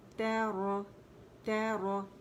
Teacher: تا باریک ہے, را موٹی